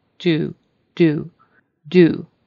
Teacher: The American U is very kind of long, and your lips are rounded. Do, do, do, rather than do.